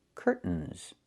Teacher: I can use a stop T and say curt, stop the air, put the tongue up, curtains, and go directly to the N